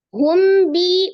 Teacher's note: mim sukun bertemu dengan huruf ba hukumnya adalah Ikhfa Syafawi ya mim sukun bertemu dengan ba dibaca dengan samar ya disertai dengan ghunah dengung